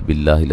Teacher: لفظ اللہ کو باریک پڑھا جائے گا، اس سے پہلے زیر ہے